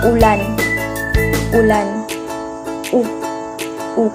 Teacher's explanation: Mataas at nasa likod ang dila at mas pabilog ang labi tulad ng salitang ulan.